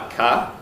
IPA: ɑkɑ